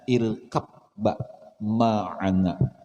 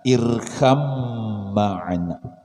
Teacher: Bacaannya irkam ma'ana. Kenapa baknya hilang, bertemu mim, ya. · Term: idgham mutajanisain